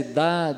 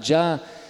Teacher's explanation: Um é oclusivo, outro é africado